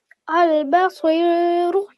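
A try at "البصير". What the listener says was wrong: Very nice. I love your pronunciation.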